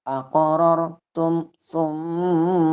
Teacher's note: mim dengan sukun bertemu dengan sa itu tidak didengungkan karena hukum bacaannya adalah idhar syafawi